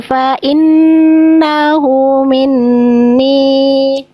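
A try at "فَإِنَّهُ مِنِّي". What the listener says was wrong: Nun tasdid konsistenkan. Nun tasdid yang awal bagus, nun tasdid yang kedua belum konsisten. Harus sama kadarnya,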